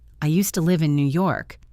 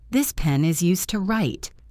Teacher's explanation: If you hear used to with a clear D, it means utilized for.